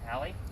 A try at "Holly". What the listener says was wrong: Holly with an O.